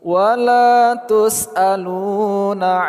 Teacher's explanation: La panjang dua harakat. Lu panjang dua harakat.